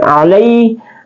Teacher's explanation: dan la berbaris fathah dia adalah huruf Alin atau mad lain alai dibaca panjang dua harakat